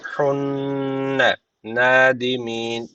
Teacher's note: yusbihunne şeddel nun var. Mutlaka bir elif tutuyoruz.